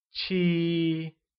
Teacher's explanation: Seven becomes Qī ,and is said with a high level tone